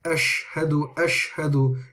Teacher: sorry and it just goes straight out of the mouth however when you are pronouncing the sheen it's a much fuller sound